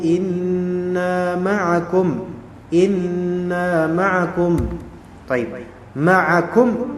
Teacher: nunnya didengungkan karena dia tasdid